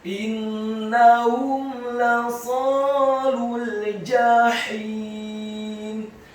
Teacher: huruf mim yang sukun bertemu dengan huruf lam yang fathah. Hukum bacaannya adalah idhar syafawi, dibaca dengan jelas, tidak boleh digunakan huruf mim yang sukunnya.